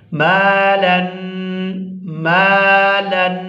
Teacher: وہ حرف جو ہے وہ کھینچ کر ادا کیا جاتا ہے۔ یہاں الف کے ساتھ میم ملا ہوا ہے اور میم کے اوپر ہے زبر، تو ہم اس کو کھینچ کر ادا کریں گے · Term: الف مدہ